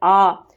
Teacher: कंठ से बोला जाता है हमारा आ। आप बोल के देखेंगे ना तो आपको गले में से, कंठ में से आपको महसूस होगी हमारी वायु कैसे स्पर्श कर रही है कंठ को, ये सब आप बोल लेंगे ना।